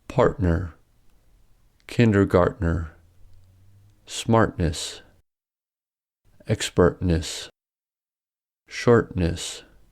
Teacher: The glottal stop can also occur when T comes between an R-colored vowel and N.